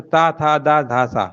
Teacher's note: दंत वे ध्वनियां होती हैं जिनमें जीभ जो होती है ना दांतों के पिछले भाग को क्या करती है? छूती है, ठीक है ना।